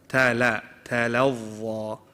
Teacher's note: The ta and the lam are light. Dha is heavy.